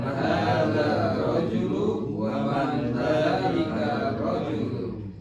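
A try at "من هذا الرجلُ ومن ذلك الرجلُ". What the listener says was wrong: Dzalikar. Hadar, bukan hadar rajulu. Ya, man hadar karena ada alif lam ya. Jadi hada ditambah alif lam langsung nggak boleh tidak digabung, harus gabung. Man hadar rajulu wa man dzalikar rajulu.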